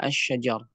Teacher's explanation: Di sini kita tidak menyebutkan lam, tapi dia masuk ke dalam sin. Masuk ke dalam huruf yang ada di depannya. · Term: alif lam syamsiyah